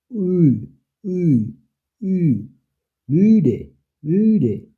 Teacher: উ উচ্চারণটা হয় ঠোঁট গোল করে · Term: উ উমলাউট